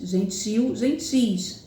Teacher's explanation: o ti é a sílaba mais forte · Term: sílaba tônica